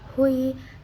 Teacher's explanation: Cara bacanya dimasukkan tanwinnya ke huruf ya sambil berdengung. Jadi wujuh hui, dengungnya bawaan dari tanwin dari nun. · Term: idgham bigunah